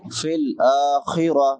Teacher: خا ادنا حلق سے، حلق کے شروع والے حصے سے جو منہ کے ساتھ ملا ہوا ہے، اور وقف کریں گے تا پہ تو تا کو ہا سے بدل دیں گے، آخرت نہیں پڑھیں گے، آخرہ۔